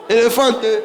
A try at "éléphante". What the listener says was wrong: Tu dis éléphanto.